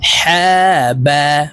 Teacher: হা হরফ হলকের মধ্যখান থেকে উচ্চারণ হবে কারণ হার মাখরাজ হলকের মধ্যখান থেকে হবে আমরা সুন্দরভাবে শুদ্ধ উচ্চারণ